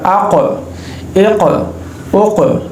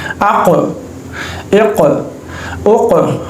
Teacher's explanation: मखरज में आवाज़ बंद होने के बाद दोबारा जो है ना जाहिर होती है। ठीक है, अब इसमें क़ाफ सही तरह से जाहिर नहीं होगा, अब इसमें कलकला करना यहाँ पे ज़रूरी है।